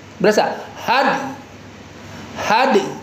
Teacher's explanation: had had dalnya kasih qalqalah ya